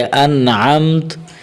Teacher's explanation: یہاں تا پر وقف کرنا ہو تو پھر تا کو ساکن کر دیں گے